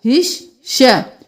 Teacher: قُلْ لِلَّهِ الشَّفَاعَةُ، یہاں پر ہم اسلام کو نہیں پڑھیں گے، قوف کو اسلام کے ساتھ ملائیں گے، قوف موٹا پڑھیں گے، قوف پیش لام قل، پھر لام زیر لام لل، قل لل، لام کھڑی زبر لا، قل لل لا، ہا زیر شین ہش، یہاں پر الف اور لام کو نہیں پڑھیں گے، ہا کو شین کے ساتھ ملائیں گے